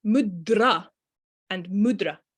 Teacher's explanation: it is that tongue going right to the back of the teeth and I'm not rolling my tongue because I can't you're just hearing that tongue moving quickly off